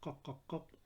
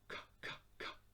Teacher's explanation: if you repeat kaf, you find the breath running with its sound.